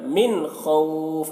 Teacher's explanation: من میں جلدی کریں گے کیونکہ نون ساکن کے بعد حروف حلقی میں سے خا آ رہا، تو یہاں پر جلدی کرنا ہے.